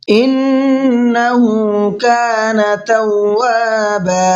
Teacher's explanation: ان کے نون میں غنہ کریں گے، اس لیے کہ نون پر تشدید ہے، اور جب نون پر تشدید ہوتی ہے تو نون میں غنہ کر کے پڑھتے ہیں۔